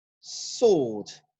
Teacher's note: So you don't say swad, no, because the W in the word sword is actually silent